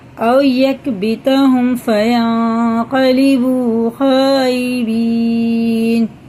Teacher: یہ واو ساکن سے پہلے زبر ہے تو یہ حرف لین ہے، یہ جلدی پڑھیں گے